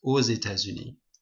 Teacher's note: we make a liaison here, it's called a liaison, and then X becomes a Z sound